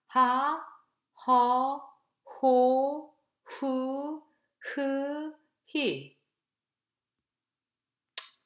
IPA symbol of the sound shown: h